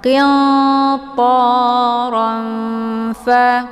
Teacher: Ini dinamakan dengan ikhfa awsat. Cara bacanya, tanwinnya disamarkan, siap-siap menuju ke huruf fa dengan cara didengungkan.